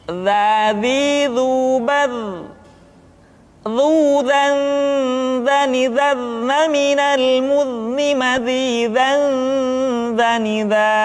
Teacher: Diucapkan dengan menyentuhkan ujung lidah dengan dinding dua gigi seri bagian atas seperti kita mengucapkan huruf tha. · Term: huruf za